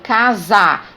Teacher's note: é o s com som de z